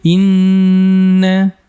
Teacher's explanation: la Yun baik kita kupas pertama di ghunah musyaddadah di sini kita tahan dengungnya Ya kurang lebih sekitar dua harakat